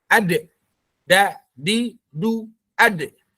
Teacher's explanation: Udaranya tertahan. Karena udaranya tertahan, maka dia larinya ke qalqalah.